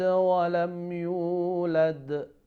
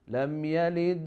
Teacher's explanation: So yalid and then yulad, of course both of them they have qalqalah, but the yulad should be a little bit more than yalid, because yalid is in the middle but yulad is at the end.